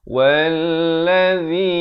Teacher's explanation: Kemudian wallazi, wa bari atas terus naik di atas lam yang bersabdu itu. Wallazi, zi di hujung lidah dengan kadar panjang 4 atau 5 harakat.